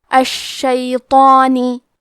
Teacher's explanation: کیونکہ مد الف سے پہلے حرف الطو ہے تو ہمیں مد الف کو بھی بھاری آواز میں ادا کرنا ہے